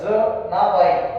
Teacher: जनाबाई या शब्दाचा उच्चार केला तर ज मध्ये अ मिसळलेला दिसतो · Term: दंत तालव्य